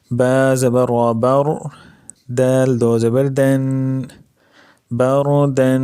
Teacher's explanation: یہاں پر را ساکن ہے اور اس سے پہلے زبر ہے، تو یہاں پر را کیا ہوگی، موٹی ہوگی